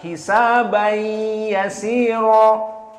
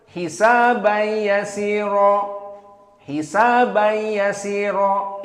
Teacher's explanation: Adapun qiraah dari hamzah tanpa idgham. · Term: al-idgham an-naqis